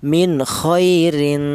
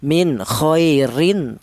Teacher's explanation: Tanwinnya ini yang dibaca samar ya. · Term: ikhfa